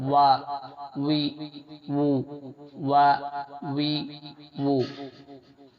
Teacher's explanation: اور پھر واو کا مخرج ہے دونوں ہونٹوں کو گول کر کے الگ کرنے پر، دونوں ہونٹوں کو گول کر کے الگ کرنے پر واو نکلتا ہے